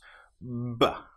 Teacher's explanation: Lips together build up pressure behind. With the B sound, we build up pressure with the vocal cords. B. With the P sound, we build up pressure without using the vocal cords.